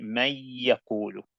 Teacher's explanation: the noon sakin or the tanween is going to disappear, but it's not going to disappear completely. It's going to disappear into the next letter. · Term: idgham